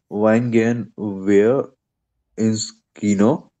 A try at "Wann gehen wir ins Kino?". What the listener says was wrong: Please read one more time and be focus on the sound of a in one. So wann gehen wir ins Kino, right? Not when gehen wir ins Kino.